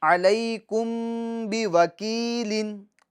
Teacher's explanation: میم ساکن میں ہم گناہ کریں گے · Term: اخفاء شفوی